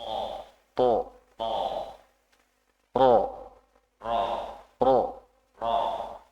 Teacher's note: huruf th dan ro itu pangkal lidahnya terangkat